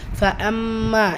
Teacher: ஃபஅம்மா இந்த இடத்துல மீமு ஷதா இருக்குது, குன்னா செஞ்சு ஓதணும். மா அலிஃப் மத்தா 2 ஹரக்கத்தளவு நீட்டம் கொடுத்து ஓதணும்.